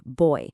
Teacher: Your tongue journeys from an o sound to an e sound.